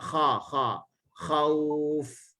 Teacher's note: Ujung lidah jatuh, dia infitah. Kalau dia mocong, kalau dia baca kha, salah sifat.